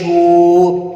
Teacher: حمزہ نون زیر ان، نون زبر نہ، ہا الٹا پیش ہو، تو ہا کے اوپر الٹا پیش ہے، کھڑی زبر کھڑی زیر، یہ الٹا پیش جس حرف کے اوپر آ جائیں ہم اس حرف کو ایک الف کی مقدار لمبا کر کے پڑھتے ہیں۔ تو یہاں پر ہم ہا کو ایک الف کی مقدار لمبا کر کے پڑھیں گے۔